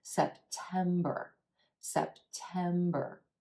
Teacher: 3 syllables here with emphasis on the second syllable and the a is in red bow sound notice how I